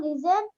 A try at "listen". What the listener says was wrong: it's not listen, beta. It's listen. Listen. Z sound should not come.